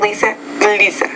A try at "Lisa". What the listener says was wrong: Yeah, I think that's Z. Zip, zoo, maze, Eliza. You can work on that Z a little bit more too, so I'm going to write that down.